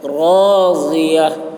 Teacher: ضاد کو بھی موٹی آواز میں